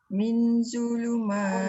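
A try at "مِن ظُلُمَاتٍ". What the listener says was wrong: Dia tak boleh min. Nun tak boleh dia letakkan di langit. Min zulumat. Lidah lu.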